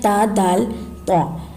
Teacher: तो जबान नोक और ऊपर के दांतों की जड़ से अदा होते हैं